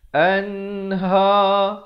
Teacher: An izhar halqi. Sempurnakan saja bunyi nun.